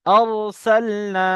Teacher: আলিফ মাদ্দাকে এক আলিফ পরিমাণ টান দিয়ে পড়তে হয়